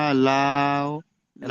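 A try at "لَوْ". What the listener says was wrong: লাউ হবে না, দেখেন একটা কথা বলি। খাড়া জাবারের পরে, এই যেমন মিম খাড়া জাবারের পরে ইয়া ছিল, এখানে লাম খাড়া জাবার পর অ রয়েছে।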